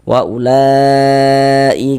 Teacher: La dibaca panjang mad thabi'i pada awalnya sesuai dengan rumus tiga. Kemudian mad thabiinya bertemu dengan ini dengan huruf hamzah tapi dia dalam satu kata atau dalam satu kalimat maka dia berubah menjadi mad wajib muttasil panjangnya itu 4 sampai dengan 5 harakat